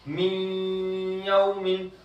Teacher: तो देखो नून साकिन, ये नून साकिन हुआ और ये या है मिसाल के तौर पर, अब गुन्ना करेंगे, नून की सिफत बाकी रहेगी, नून की आवाज थोड़ी सी बाकी रहेगी